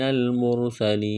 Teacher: نون مشدد پر غنہ کریں گے، آواز ناک میں چھپائیں گے، کاف کو باریک کرنا ہے، نون کو لام کے ساتھ ملائیں گے، میم کو را کے ساتھ، را ساکن سے پہلے پیش ہے تو را کو موٹا کرنا ہے، اس پیش کی وجہ سے سین میں سیٹی کی آواز پیدا کریں گے، سین کو باریک کرنا ہے، یا ساکن سے پہلے زیر ہے، حروف مدہ یا ہے، ایک الف کے برابر کھینچنا ہے، یہاں پر وقف کریں گے تو نون کو ساکن کریں گے۔